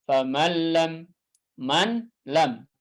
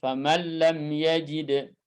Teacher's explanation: Hurufnya masuk, ya, kemudian juga sifat gunnahnya juga lebur semua. Ya. Sehingga dibaca bila gunnah, bi ghairi gunnah. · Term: idgham kamil